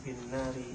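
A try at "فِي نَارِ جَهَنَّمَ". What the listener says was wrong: Enggak usah dijadi tasdid. Bukan fin nari, fi Fi nari jahannam.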